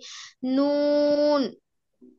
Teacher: জিহ্বার আগ আর তার বরাবর উপরের তালুর সঙ্গে লাগিয়ে নুন, 9 নাম্বার।